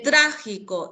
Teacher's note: En trágico está en la antepenúltima.